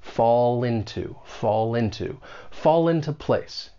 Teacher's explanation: When you pronounce this phrase, keep in mind linking will often occur. We can link that consonant sound in fall with the beginning vowel sound in into.